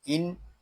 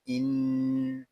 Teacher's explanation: نون مشدد ہے، اس کو غننے کے ساتھ ادا کریں گے، اس کو ان اس طرح نہیں پڑھیں گے، اس کو پڑھیں گے ان۔